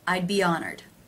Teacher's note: the e as in she vowel linking to the ah as in father vowel